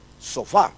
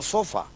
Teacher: llevan un acento acústico en la última sílaba